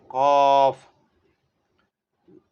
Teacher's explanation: یہ بڑی کاف ہے تو اس کو حلق سے نکالنا ہے